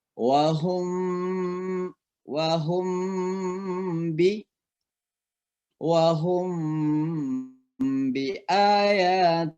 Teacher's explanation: disebut Ikhfa Syafawi ikhfa itu artinya samar-samar syafawi artinya bibir jadi suara mim mati itu di samar-samar kan di bibir